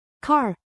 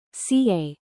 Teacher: you might notice a tendency to drop the R at the end of words, as in car, becoming ca.